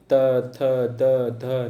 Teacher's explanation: आपकी जीवा कहाँ टच कर रही है, आपके दंत में टच कर रही है, इसीलिए इसे दंत वर्ड कहते हैं